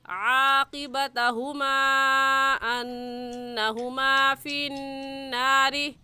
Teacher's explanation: فی النار میں بھی نون مشدد ہے، اور نون مشدد پر ہمیشہ غنہ ہوتا ہے، تو غنہ کر کے پڑھیں گے